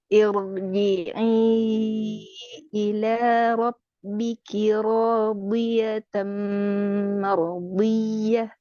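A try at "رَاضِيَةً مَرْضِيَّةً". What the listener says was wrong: Hati-hati, mim. Ini mim tipis ya. Makanya hampir-hampir mim ini biasanya ke bawah tebal karena huruf ro ya. Maka radiyatan mardiyah. Tidak mardi, tapi mardiyah. Coba dari radi.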